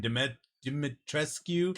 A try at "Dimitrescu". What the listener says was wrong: No, it's Dimitrescu, because they said you don't say the Q on the end of it. Dimitrescu.